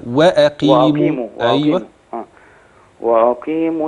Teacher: خلي بالك من ترقيق الهمز